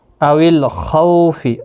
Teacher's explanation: خو واولین ہے، تھوڑا نرمی کے ساتھ ایک آدھے الف کی مقدار کے برابر کھینچ کر پڑھیں گے۔ خا مستعلیہ ہے، پر پڑھا جائے گا۔